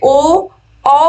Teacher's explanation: ओ औ बोलने पे आपके ओठों का प्रयोग हो रहा है और आपके गले का यानी कि कंठ का प्रयोग हो रहा है। तो कंठोष्ठ है इसका उच्चारण, यानी कि कंठ और ओष्ठ।